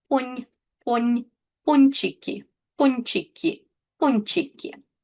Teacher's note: In this combination, N before ch, N is pronounced soft. So ch, being a soft consonant, softens the letter before it.